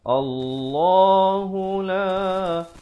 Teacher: Jangan lupa lafaz jalalah lam yang kedua ini dibaca 2 harakat dan dibaca dengan tebal, bila dia berada di hadapan. Allahu la dibacakan dengan 4 atau 5 harakat.